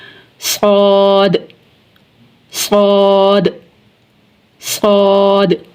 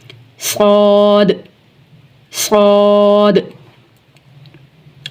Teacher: और इन तीनों का एक ही मकरज है। नोके जुबान जब सनाया उलिया और सुफला दोनों किनारों के बीच में आए तो यह तीन हरूफ अदा होते हैं। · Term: सफीरिया